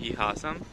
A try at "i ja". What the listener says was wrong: Not ha, i ja, ja. Yeah, actually this ja is like in German, actually. Like when you say yes in German. So this is that ja. I ja.